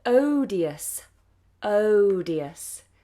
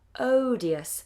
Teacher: There's a big diphthong at the beginning.